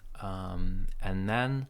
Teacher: and sounds like N, no D there. We link, and this linking sounds like a big N, so there's no TH.